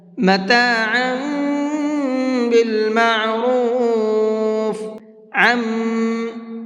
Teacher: یہاں پر غنہ کریں گے، اس لیے کہ یہاں پر تنوین کے بعد میں با آ رہا ہے